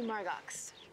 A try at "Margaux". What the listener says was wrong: It's Margaux. The X is silent.